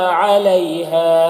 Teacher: علی میں یا لین، اسے نرم آواز کے ساتھ جلد پڑھیں گے